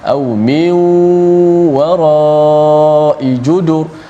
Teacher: nun bertemu dengan waw, berlaku sekali lagi idgham ma'al gunnah · di hujung tu wara dipanjangkan, kemudian diwakaf, diberhenti pada kalimah judur